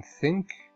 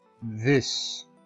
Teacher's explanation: the only English sounds that are produced between the teeth and our so called interdental